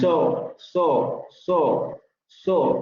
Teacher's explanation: Exactamente, labializado, ¿no? Posterior semiabierto labializado también suele parecer con alargamiento